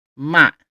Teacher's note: we have a falling tone, ma. It goes down. You're pulling your voice down.